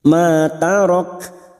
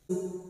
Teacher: sifat dari huruf kaf yang memiliki sifat hamas kita tampakkan pada saat dibaca waqaf bunyinya ma tarak.